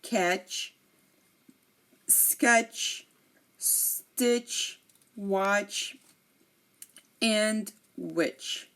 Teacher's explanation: Now you are not hearing me say the T, you are hearing the CH, which is almost, sounding like a T.